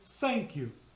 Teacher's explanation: The unvoiced would be in the word thank you. because there's no pitch given to it.